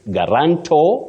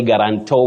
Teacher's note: with a stress on the last syllable